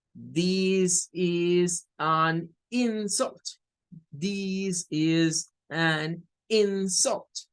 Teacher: this is an insult, this is an insult, marcando con más fuerza el in